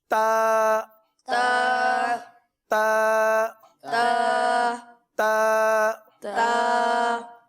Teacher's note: इसका मखरज भी बहुत आसान है, ज़बान की नोक और ऊपर के दांतों की जड़ से ये अदा होता है